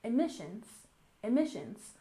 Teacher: Emissions has stress on the second syllable, emissions, emissions.